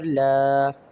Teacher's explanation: لام کے اوپر ایک اور سائن ہے کھڑی زبر کا، اسے ایک الف کی مقدار کھینچیں گے